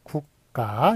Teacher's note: 무성음과 무성음이 만났을 때 안울림 소리와 안 울림 소리가 만났을 때 뒤에 있는 것이 된소리가 된다는 한국의 덴소리 되기 현상이 있는데요 이것은 표기에 반영을 안 하기로 했습니다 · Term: 된소리 되게 현상